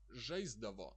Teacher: the s somehow is pronounced like z. It sometimes can be hard to differentiate, but it really isn't important.